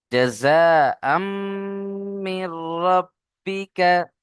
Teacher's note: মিমের উপরে তাসদীদ ওয়াজিব গুন্না, প্রত্যেকেই গুন্না করবেন।